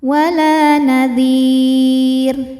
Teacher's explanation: Karena ada alif didahului fathah maka lam panjang dua harakat. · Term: mad thobi